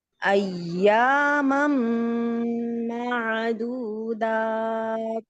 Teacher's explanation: अय्यमम, मम इसका मतलब है कि उन्होंने अपने दोनों होंठ मुंह के अंदर कर लिए थे। ऐसे नहीं, एक होंठ को दूसरे होंठ के ऊपर रखना है और जब मीम की शद है तो उसको प्रेस करेंगे, लेकिन होंठ को अंदर की जानिब फोल्ड नहीं करना, अंदर नहीं घुसाना है उसको।